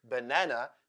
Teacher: the word banana has two schwa sounds. The first and the last letter A sounds like schwa. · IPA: ə